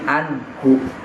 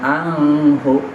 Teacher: Ya, ha itu huruf izhar, maka an-nya dibaca jelas. Jangan didengungkan, jangan disamarkan. Jadi anhu bukan anghu.